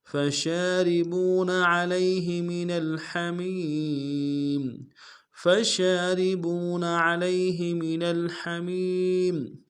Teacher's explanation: شین کو واضح کریں گے، شین کے اوپر کھڑا زبر ہے، ایک الف دال میں کھینچیں گے، را کو باریک ادا کریں گے، با کو واو کے ساتھ ملانا، واو مدہ ایک الف دال میں کھینچیں گے۔